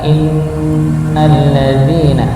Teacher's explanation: itu ada huruf nun yang bertasydid, maka didengungkan innal ladzina, didengungkan.